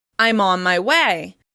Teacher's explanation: When saying I'm on my way, we often change the /n/ sound into the /m/ sound to flow more easily into the next word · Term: assimilation